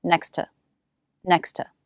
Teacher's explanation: make one t sound in the phrase next to next to think of dropping the first t sound and connecting the two words